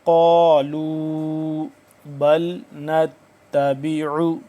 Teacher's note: انزل اللہ، قالوا بل نتبع، قاف الف زبر قا لمبا بشلو، قاف کو موٹا کر کے پڑھیں گے